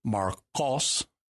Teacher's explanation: you're pronouncing the Q towards the back of your mouth there, not the K towards the front